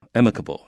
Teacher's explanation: 注 意 这 个 是 重 音 在 前 面 啊